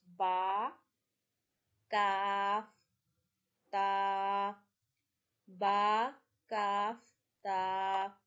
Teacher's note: Ta we read from the roots of upper front teeth. · Ba we read from the wet part of our lips.